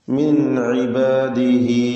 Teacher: ഹ ഉദ്മീറിന് മദ്ദുസ്സിലത്തു സുഗ്ര നൽകി രണ്ട് ഹറക്കത്തിൻ്റെ അളവിൽ മാത്രം ദീർഘം നൽകുക.